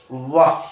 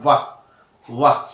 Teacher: देखिए ऊपर के दांत से नीचे का होठ टकरा रहा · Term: दंत ओष्ठ